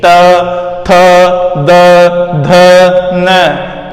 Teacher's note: जैसे त बोलोगे तो आपकी जो जीभ है वो खुद ही दांतों को स्पर्श करेगी।